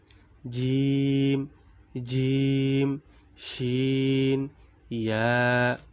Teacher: 6 নম্বর মাখরাজ, জিহ্বার মধ্যখান তার বরাবর উপরের তালুর সঙ্গে লাগাইয়া জিম শিন ইয়া।